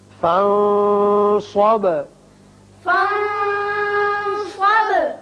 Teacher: فَانصَبْ نون پر اخفا، با کی صفت قلقلہ.